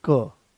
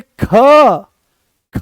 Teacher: जैसे ही हमने क बोला, कोई ज्यादा जोर नहीं लगाना पड़ा, आराम से वो आ गया है क, कम प्राणवायु की आवश्यकता पड़ी, आराम से आपने उसको बोल दिया। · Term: अल्प प्राण